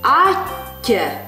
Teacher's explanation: Не забываем, как звучат у нас вместе стоящие две одинаковые буквы. Слитно и долго.